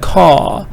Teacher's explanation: British, we just say caw because there is no vowel after R.